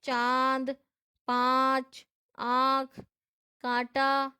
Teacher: इसका उच्चारण नाक और गले दोनों से होता है। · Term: अनुनासिक